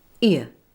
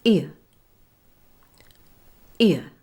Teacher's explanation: Notice how I'm putting slightly more emphasis and length on the first I sound.